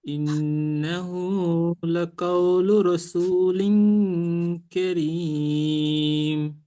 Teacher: রসুলিন একটু টান বেশি হবে, আর ইন্নাহু টান একটু বেশি হবে